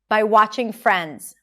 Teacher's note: watching Friends, stress is on 'Friends'. Notice the R sound here, round your lips, and make sure that the transition between the F and the R is smooth: Friends, Friends, by watching Friends.